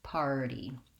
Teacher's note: you may be trying to say party and your R drops out, and then it sounds too much like potty, potty. So this one I want just an open ah vowel to go right back to my D at the end.